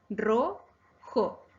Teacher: Es grave porque su acento está en la penúltima sílaba ro. No lleva tilde porque termina en vocal.